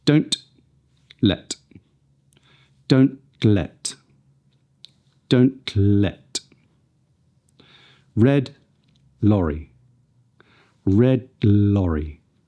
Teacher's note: we can also link words with our laterally released T and D, when they are followed by an L.